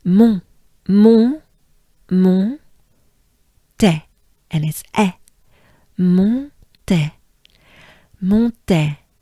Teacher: we have the on sound, which is in your mouth and in your nose.